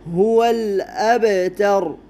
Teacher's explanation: با حروف قلقلہ میں سے ہے، قلقلہ کرنا ہے